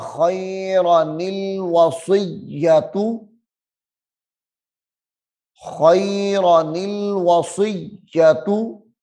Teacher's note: خیر نل ملا کے پڑھنا زیادہ بہتر ہے بجائے وقف کرنے کے